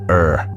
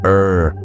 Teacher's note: the Italian R is pronounced with a rolling sound, created by a relaxed, vibrating tongue.